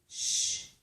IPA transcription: ʃ